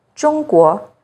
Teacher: You may see it in some very common Chinese family names like Zhang, Zhou, Zheng, and in this word, 中国, China. ZH sounds like the first sound in jerky, with the tip of the tongue raised against the hard palate.